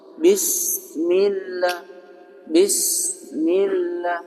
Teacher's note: Kalau sudah begitu bis enggak boleh karena nanti berubah sifatnya dia jadi syiddah. Sedangkan sin itu sifatnya hamas dan rakhawah.